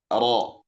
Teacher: ujung lidah bagian atas tentu saja dengan gizi atas. Jadi ujung lidah kita yang bagian atas itu ditempelkan kepada gusi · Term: Makhraj huruf ro